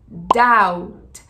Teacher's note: E para pronunciar, não esqueça que o B, ele deve sempre ser mudo